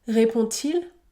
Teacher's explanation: Le D se prononce T, T, répond-il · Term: liaison